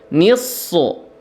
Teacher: ni-nya itu tipis, sotnya itu tebal.